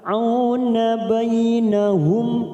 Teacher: mim sukun bertemu hamzah, kita baca jelas tanpa mendengung, idhar safawi